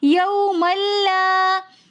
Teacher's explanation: یومن میں میم کے اوپر 2 زبر کی تنوین ہے، لیکن آگے لام آ رہا ہے، تو اس لیے ہم یہاں پر غنہ نہیں کریں گے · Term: ادغام بلا غنہ